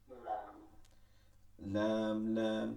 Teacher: জিহ্বার আগার কিনারা, সামনের উপর দাঁতের মাড়ির সঙ্গে লাগাই লাম। এই যে জিহ্বাটা এভাবে এসে লাগছে মাড়িতে, লাম, লাম, ঠিক আছে, লাম, নর্মাল।